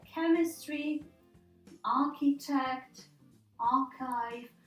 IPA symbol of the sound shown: k